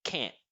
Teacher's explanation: the negative form is always short, it's quick, and it has this stop sound quality